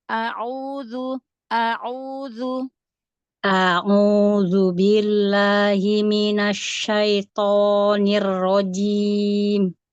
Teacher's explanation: Hamzahnya jangan nyeret ke ain satu-satu